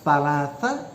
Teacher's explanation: you are involving the front part of the tongue, touching the teeth